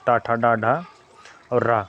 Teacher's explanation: मुर्धन्य व्यंजन कहते हैं इन व्यंजनों का उच्चारण करते समय जिहा जिहा का आगे का भाग कठोर ताल के पिछले भाग को स्पर्श करता है